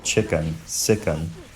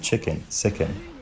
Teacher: Sometimes, the unstressed vowel shows up as something more like ih.